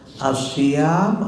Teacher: As-syam ada alif mad tobe'i, panjangnya 2 harkat.